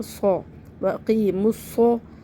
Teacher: صوت کو موٹا پڑھنا ہے اور سیٹی کے ساتھ